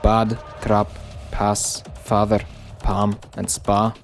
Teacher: the ah and father palm or spa are reduced to the shorter ah in scottish